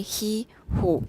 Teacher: back as you say he who you can you can also feel your lips becoming more rounded